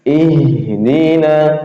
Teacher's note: huruf h makhrajnya di tenggorokan bagian bawah